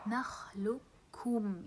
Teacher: You see the idgham here between the qaf and the kaf.